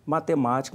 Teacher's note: Matemática, uma proparoxítona, a sílaba tônica é o ma, onde tem o acento.